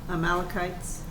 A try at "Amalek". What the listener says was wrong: Well, not kites. It's just the man. Amalek.